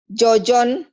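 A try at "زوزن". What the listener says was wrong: Ini Zozon ya, bukan Jojon. Ini Zozon mirip ya. Ini Zozon. Tapi dalam bahasa Arab nggak ada Jojon. Ada juga jajan, jijin, jujun ya. Kalau ini kan jajan. Jajan, jijin, jujun. Jojon nggak ada pakai jim.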